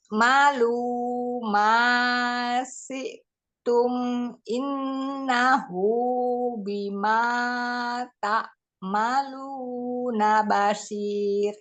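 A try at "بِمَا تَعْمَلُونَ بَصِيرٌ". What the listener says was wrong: Dialirin lagi. Bima ta'maluna basir. Jadi sekarang karena ainnya masih terlalu syiddah, usahain ngalir dulu ya. Tapi harus dialirkan dulu suaranya.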